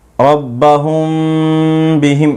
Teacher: میم ساکن کے بعد با آئے تو میم ساکن کا اخفاء ہوگا، اور ایک الف کے برابر غنہ بھی ہوگا، جیسے ربہم بہم، اس طرح سے۔